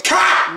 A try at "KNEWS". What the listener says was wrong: It's a silent K, you get it?